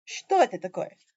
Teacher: You have that rise on the question word, or on whatever's being questioned in the sentence. Yeah. And then sometimes you'll come down. · In Russian, you come up on the part of the sentence that you're questioning, and then you come back down for the end of the sentence.